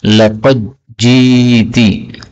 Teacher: dal ketemu dengan jim, boleh dibaca idgham menjadi laqad ji'ti.